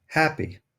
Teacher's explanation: air rushing up from your lungs passing through the space between your vocal cords and flowing out of your mouth the space between your vocal cords is called the colitis and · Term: glottal sound